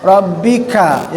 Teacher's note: Rabbika, yang mengingatkan kembali huruf k-nya, huruf ada hamasnya, ya, desis